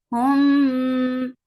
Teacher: So, and the most important part of ikhfa is ghunnah. So, keep the sound in your nose for a longer time